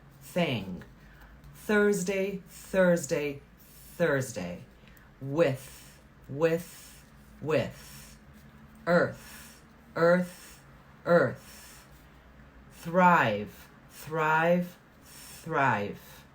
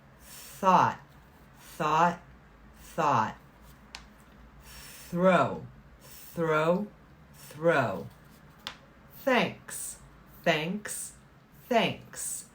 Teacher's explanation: that is the voiceless th just air position of the tongue and no sound the sound comes from the vowel